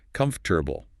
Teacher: Much shorter. The stress is all on the first syllable